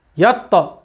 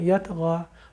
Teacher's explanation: موٹا حرف ہے، قلقلہ بھی موٹا ہوگا، قوت کے ساتھ ایک دم رکیں گے، جیسے ہم قاف میں رکے تھے اق، اسی طرح یہاں پہ بھی رکیں گے ہم.